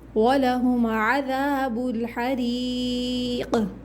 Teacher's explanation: قاف پہ قلقلہ ہوگا، آواز پلٹ کر آئے گی